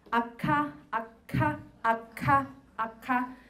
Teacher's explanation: you hold your breath and then trying to block the air using the back of your tongue to to block the velar area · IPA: [k']